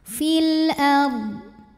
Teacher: lam sukun kita bunyikan dengan jelas atau biasa disebut dengan izhar qamari